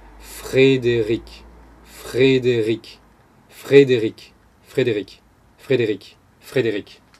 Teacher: And then the second R sound, which is right before a vowel, well, in between two vowels, Frédéric, Frédéric, Eric, is going to be voiced. So you've got a voiceless uvular fricative, and then a voiced uvular fricative.